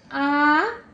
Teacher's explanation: জিহ্বা নিচে থাকবে আ, এবং বিবৃত্ত, মুখটা বেশি বড় হয়ে যাচ্ছে, খুলে যাচ্ছে, বিবৃত্ত আ।